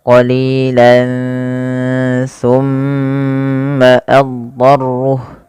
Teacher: Kemudian pada lafal summa tahanlah bacaan summa karena ia bacaan gunnah sehingga mimnya wajib ditahan sepanjang 2 harokat